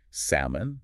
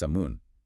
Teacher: But in British English, the L is silent. It's completely absorbed by the vowel. So, it's pronounced samun.